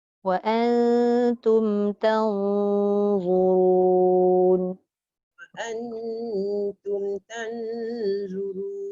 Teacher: Satu nipis sebab nun bertemu ta, satu nun bertemu dha.